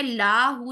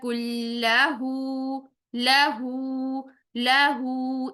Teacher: لام کو لمبا نہیں کرنا اور ہا کو لمبا کرنا ہے، کیوں؟ کیونکہ یہ الٹا پیش واو مدہ کے قائم مقام ہے۔